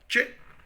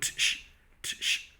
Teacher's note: It's an affricate. Double articulation. Two sounds. One is a plosive, t. The other one is affricative, sh.